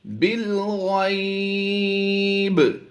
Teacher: با پر ہم نے وقف کی حالت میں قلقلہ کرنا ہے، کیونکہ زیر کو ہم وقف میں جزم سے بدل دیتے ہیں، تو ہم یہاں پر قلقلہ کریں گے، با ساکن ہو جائے گا۔